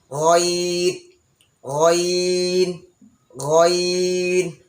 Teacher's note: তো এখানে হচ্ছে আমাদের হলকের শেষ, হলকের শেষ হতে গইন উচ্চারিত হবে।